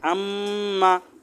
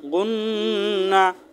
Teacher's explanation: গুন্না নাকের বাঁশি থেকে গুনগুন করে আওয়াজ হয়ে গুন্না হয়